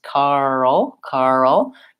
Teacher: I kind of insert that uh or that schwa sound because it's a dark L